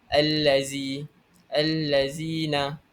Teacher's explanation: cara baca untuk alif lam syamsiah ini ialah dibaca dengan idgham tanpa dengung. Dan jika selepas huruf lam bertemu dengan huruf-huruf alif lam syamsiah.